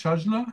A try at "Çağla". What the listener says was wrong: yes, it's silent, and the first letter is ç.